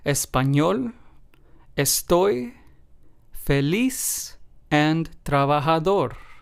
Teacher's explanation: as you can hear in all four of these words we stressed the very last syllable